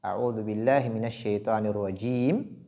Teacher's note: Quand nous prenons la fin de l'isti'ada, a'udhu billahi minash shaitanir rajim, cette lettre mim qui est au niveau de ar-rajim porte kasra. Et cette voyelle kasra est transformée en soukoun à l'arrêt